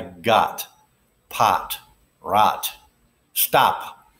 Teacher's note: there's a short o sound and there's a long o sound the short o sound is formed without using the lips at all